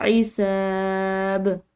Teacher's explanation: با حروف قلقلہ میں سے، تو اس کو ہم نے ہلاتے ہوئے ادا کرنا ہے